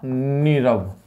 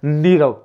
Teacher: अब देखिए विसर्ग के बाद रे आया और विसर्ग का लोप हो गया, तो विसर्ग से पहले की छोटी ध्वनि जो ह्रस्व स्वर है वो दीर्घ में बदल गया। छोटी नी बड़ी नी में बदल जाती है।